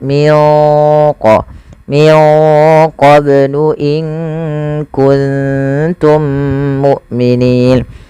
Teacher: Kemudian pada lafal mim mati bertemu mim, adanya 2 mim yang saling berdekatan, maka cara membacanya mim yang satunya dimasukkan kepada mim yang kedua dan ditahan suara mimnya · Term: idgham mim